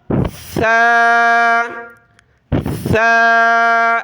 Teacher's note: یہاں ہم نے سیٹی کی آواز نہیں نکالنی، بغیر سیٹی کی آواز کے ہم اس حرف کو ادا کریں گے۔ زبان کی نوک دانتوں سے باہر نکالیں گے اور نرمی کے ساتھ اس کو ادا کرنا ہے بغیر سیٹی کی آواز کے ثا آپ کی زبان جو ہے باہر نہیں نکل رہی دانتوں سے، اندر ہی ہے، تو اس کو باہر نکالنے کی کوشش کریں.